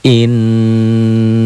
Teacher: Karena nunnya bertasid, nunnya sidah ada pendobel. Cara bacanya ya didobel, dibaca ganda nunnya. Ya dengung ke hidung, ya ditahan. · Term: Gunnah